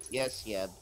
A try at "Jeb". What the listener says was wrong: His name's pronounced Jeb, right? He's not Yeb.